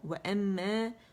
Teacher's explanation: First grade کا the most complete longest غنہ ہوگا، 2 count کا ہوگا، لیکن 2.5 سے 3 کاؤنٹ تک اس کی آواز چلی جاتی ہے. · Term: اکمل غنے